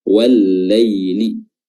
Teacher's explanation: Huruf lam yang pertama dihapus dan dileburkan langsung ke lam yang kedua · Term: alif lam syamsiyah